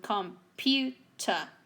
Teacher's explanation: we have three syllables but the one in the middle is the one that is a stress